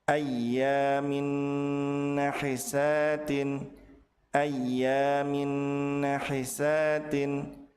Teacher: maka tanwin dilebur ke huruf nun dengan cara ditahan dua harakat dan disertai dengan ghunah. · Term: gunnah